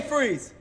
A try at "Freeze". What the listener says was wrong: You don't move your top lip that much. I move my top lip so it doesn't come out stern.